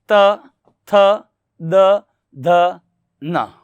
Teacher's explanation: तो जब उच्चारण हम करते हैं मित्रों त, थ, द, ध, न का, तो हम देख सकते हैं कि अपन की जो जीवा है वो कहाँ टकरा रही है? दांतों के टकरा रही है। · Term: दंत्य